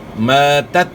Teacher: تا میں جو ہے نا قلقلہ نہیں کرنا